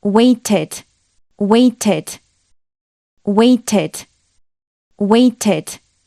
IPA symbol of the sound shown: ɪd